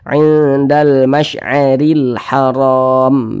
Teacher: huruf ra memiliki tanda baca kasrah, dibaca tipis, dibaca tarkik. Nah, sehingga pangkal lidah kita itu tidak terangkat ke atas, dibaca tipis saja.